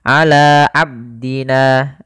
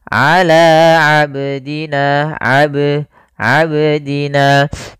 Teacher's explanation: ada bacaan qalqalah. Qalqalah artinya memantul. Kesalahan yang sering terjadi yaitu tidak memantulkan huruf qalqalah.